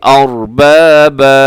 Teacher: تنوین پر جب وقف ہوتا ہے، 2 زبر کی تنوین پر، تو اس کو ہم الف مدہ کی طرح پڑھتے ہیں، یعنی ایک زبر اس میں سے ہم ختم کر دیتے ہیں جب ہم اس پر وقف کریں گے.